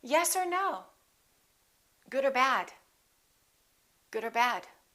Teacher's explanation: or becomes er er just a consonant er we don't say yes or no we can say yes